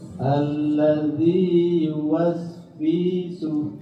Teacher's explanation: Yuwas wisu langsung 1 harokat.